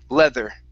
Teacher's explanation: th tongue between the teeth